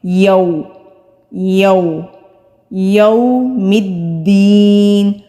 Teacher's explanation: یا کے اوپر زبر ہے، واو ساکن سے پہلے زبر ہے، تو یہ واو لین ہے، واو لین کو نرمی سے ادا کرتے ہیں، سختی سے نہیں ادا کرتے، نہ ہی کھینچتے ہیں۔ تو واو لین کو ادا کرتے ہوئے ہمارے ہونٹ پوری طرح گول ہونے چاہیے اور دائرے کی گولائی کو کم سے کم رکھیں۔